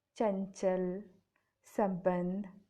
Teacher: अनुस्वार का उच्चारण नाक से होता है